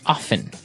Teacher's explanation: Now, with pronunciation, some people like to pronounce often, right? They kind of leave out the strong T sound. Well, other people say often.